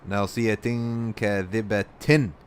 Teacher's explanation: Okay, nasiyatin kadhiba, that's ikhfa right here. You don't pronounce, you put the tanween in your nose.